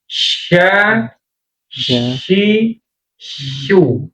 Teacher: jadi bukan ujungnya, tapi tengah lidahnya. Tempelin.